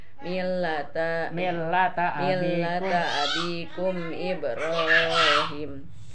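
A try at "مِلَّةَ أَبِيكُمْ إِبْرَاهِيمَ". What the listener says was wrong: Panjangkeun Ibrahim.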